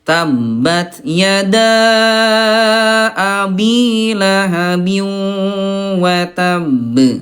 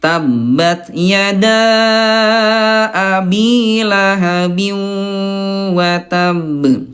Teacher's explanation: kalau ada qalqalah yang bertasydid maka ayah bunda penuhi dulu tasydidnya. Ayah Bunda baru pantulkan. Jadi seolah-olah kayak ada jeda.